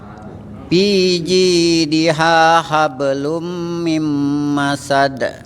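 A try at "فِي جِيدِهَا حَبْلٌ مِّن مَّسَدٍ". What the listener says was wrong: Fi. Nah giginya ya agak dilebarin Bapak ya. Ya fi.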